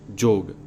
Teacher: जब किसी शब्द का यह प्रथम अक्षर रहेगा तो इसकी एक विशेष ध्वनि हो जाती है, अर्थात तब यह हो जाएगा ज, अंग्रेजी का जंप।